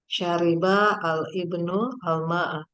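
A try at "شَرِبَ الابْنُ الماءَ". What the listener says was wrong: Nggak boleh dibaca al-ibnul. al-ibnu al-ma'a. Dipisah. Syariba atau bisa digabung ya. Syaribal ibnu al-ma'a. Atau satu-satu. Syariba al-ibnu al-ma'a.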